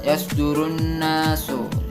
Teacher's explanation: Itu ada huruf alif lam ya atau al yang berhuruf al bertemu dengan huruf nun serta ditambah tasdid. Jadi huruf suara al itu masuk langsung ke huruf nun atau huruf sesudahnya, huruf asyamsiyah.